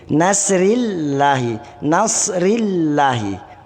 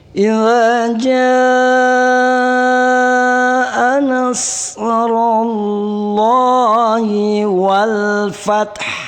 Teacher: tetap Allah lafzul jalalah ini hukum bacaannya adalah tebal, disebut dengan tafkhim.